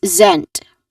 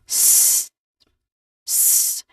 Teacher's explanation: But here we try to see it uh we try to follow the IP transcription which shows which clearly shows a letter Z here. So what's the sound that the letter Z makes? It's a buzzing sound. It's a voiced sound.